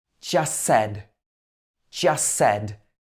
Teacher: we don't pronounce the t on the end of just.